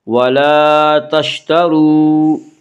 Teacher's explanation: را کے اوپر زبر پیش آئے تو را کو پر پڑھا جائے گا